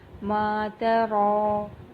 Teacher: را کے اوپر کھڑی زبر ہے، اس کو ہم نے پورا ادا کرنا ہے اور اس کو ایک الف کے برابر کھینچ کے ادا کریں گے